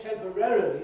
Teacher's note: you do say all the syllables that are there, but you ease the matter by moving the stress later